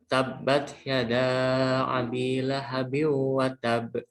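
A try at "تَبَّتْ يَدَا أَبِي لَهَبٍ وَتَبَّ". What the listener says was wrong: Nah, kurang. Lahabim kurang. Dan watab. Ini kan watab. Awas. Ini yang saya ini loh tasdidnya ini loh. Tasdidnya. Dia membedakan antara watab sama watab.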